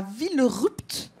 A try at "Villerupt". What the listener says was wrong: On prononce pas le PT en fait. Villerue. Vous embêtez pas avec le PT.